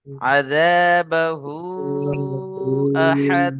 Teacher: এখানে দেখেন, হরুফে মাদ বা মাদ্দার পরে হামজা দ্বিতীয় শব্দের মধ্যে বা ভিন্ন রূপে রয়েছে। মাদ্দে মুনফাসিল 2 থেকে 3 আলিফ টান দেবো আমরা এখানে